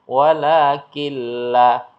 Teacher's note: gunah idgham itu artinya masuk Bi dengan la tidak gunah mendengung Jadi dimasukkan huruf berikutnya dengan tidak dibaca mendengung artinya dibaca dengan jelas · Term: idgham bila gunah